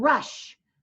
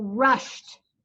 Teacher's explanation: It makes a T sound, even though it's spelled ED.